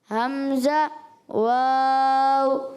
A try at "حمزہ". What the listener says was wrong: اچھا حمزہ میں آخر میں ہا بھی ادا کر. حمزہ, حمزہ, واو, واو. آنکھیں آخر میں بھی شروع میں ہونٹ گول کریں, پھر کھولیں, پھر گول کر لیں. واو.